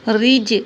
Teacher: یہاں جیم پہ قلقلہ ہوگا